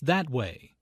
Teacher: Notice the stress on that. The speaker is pointing in a certain direction and wants to emphasize that direction.